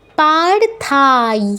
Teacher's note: পার্থায়, ঠিক আছে, পাতে দীর্ঘ হবে, থাতে দীর্ঘ হবে, যেহেতু আকার আছে। তারপর বলবো না, পার্থায় বলবো না, ইয় আছে, ইয়ই বলতে হবে।